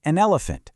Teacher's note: The consonant just slides right onto the vowel, creating this perfect unbroken connection. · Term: consonant to vowel linking